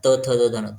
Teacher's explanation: त थ द धन ज्यावेळेस जीभ जी आहे ती दातांना लागते त थ द धन याचा उच्चार करताना जीभ दाताला टच होते · ज्यावेळेस उच्चार करणार ना दंत थ द धन, त वर्गातले जेवढे पण वर्ण उच्चार करणार त थ द धन, तर ज्यावेळेस जीभ जी आहे ती दातांना लागते. त थ द ध न याचा उच्चार करताना जीभ दाताला टच होते, म्हणून त्याला म्हटलेले दंतवर्ण. दंत म्हणजे दंत बोलताना सुद्धा आपली जीभ दातांना टच करते, तर ते सगळे दंत्यवर्ण आहेत.